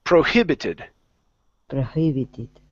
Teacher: the word prohibited stress in the middle